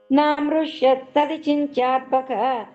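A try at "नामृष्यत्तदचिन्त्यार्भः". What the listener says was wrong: ద అనేది కొంచెం స్పష్టంగా పలికితే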